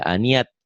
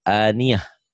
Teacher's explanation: Ini dikatakan tak marbutoh jika dihentikan berubah bunyinya menjadi ha. Aniyatin jadi aniyah.